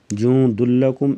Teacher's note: ادغام بلا غنہ ہوگا، یعنی ادغام کے ساتھ غنہ نہیں ہوگا